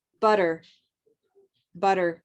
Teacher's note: if these t's are surrounded by two vowels they become pronounced as a d sound